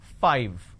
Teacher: Now the pronunciation is 5, F-I-V-E, 5. So I need to bite my lower lip to end the word.